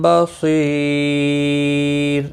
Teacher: بصیر، صاد مستعلیہ ہے، پر پڑھا جائے گا. اور وقف کی صورت میں را ساکن پڑھا جائے گا اور باریک بھی پڑھا جائے گا، کیونکہ را ساکن سے پہلے جب بھی یا ساکن ہوتا ہے تو را ساکن باریک پڑھا جاتا ہے.